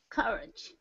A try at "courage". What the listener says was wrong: Courage. Again with the schwa sound. Very good.